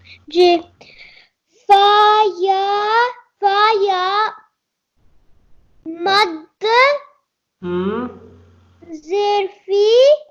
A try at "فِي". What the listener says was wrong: good good اس کو لمبا کرنا ہے تھوڑا سا فا یا مد زیر فی